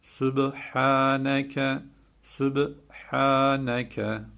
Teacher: Kalgale cezimli olunca B galgale yapılırdı. Biz de yaptık. Böyle dudağımızı vurup çekiyoruz.